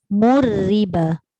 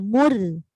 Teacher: Mu muncunglah ra nipis.